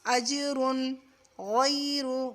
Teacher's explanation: فَلَهُمْ أَجْرٌ، اجرن را کو پر کریں گے، اور یہاں دیکھو تنوین کے بعد حروف حلقی میں سے غائن آ رہی ہے، تو یہاں پر ہم اظہار کریں گے، یعنی نون میں جو تنوین میں نون نکلتا ہے نا اس کی آواز کو بالکل کلیئر کر دیں گے